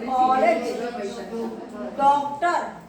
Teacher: लेकिन अंग्रेजी का शब्द ओ में आ रहा है, ना ओ क्लियर आ रहा है ना आ क्लियर आ रहा है।